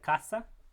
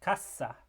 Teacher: So we have a word like casa, which means house, versus a word like casa, which means box. And so whether the S is relatively short or relatively long changes the actual word